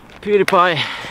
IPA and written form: ˈpjuːdipaɪ (PewDiePie)